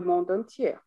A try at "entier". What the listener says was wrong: alors, dans le monde entier, on prononce toujours pas le R. Oui, c'est une erreur assez commune, celle-là. Dans le monde entier. C'est entier, premier et pas première. Voilà, il y a plein de mots comme ça. des erreurs classiques.